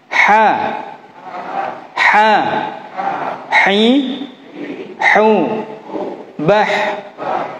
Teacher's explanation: Kemudian huruf H adanya di tengah tenggorokan